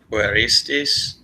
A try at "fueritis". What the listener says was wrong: Fueritis, that extra S is, yeah, it's only in the perfect.